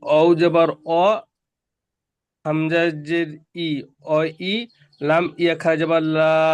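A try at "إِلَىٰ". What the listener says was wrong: ইয়াটার উচ্চারণ হবে না। ইয়াটার উচ্চারণ হবে না, কারণ ইয়ার উপরে কিছু নেই। না, ইয়াটা কেন উচ্চারণ হবে? সাকিন যাওয়ার টাওয়ার কিছু নেই।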